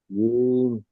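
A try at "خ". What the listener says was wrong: জিম না, ওটা খ।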